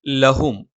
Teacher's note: ല നാവിന്റെ അറ്റം മേലെ മുൻപല്ലിന്റെ മോണയിലാണ്